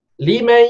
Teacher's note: Limai ya, sebut ya tapi dengung. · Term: idgham